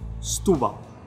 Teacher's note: In European Portuguese, we tend to smush our words together around the stressed syllable. In this case, it's the U with the accent on top, Setúbal. So you rush the first part of the word into that U, and you also rush out of that U for the second part of the word. · So you rush the first part of the word into that U, and you also rush out of that U for the second part of the word. So you barely pronounce stu, and you barely pronounce bal, Setúbal. So you almost only hear the U.